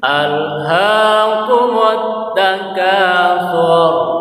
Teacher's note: Al seperti kemarin dibaca, lidah kita ditempelkan di dinding atas biar tidak terbunyi alhaakumut takatsur. Jadi rohnya baca tebal tebal pembunyiannya karena harakat sebelumnya doma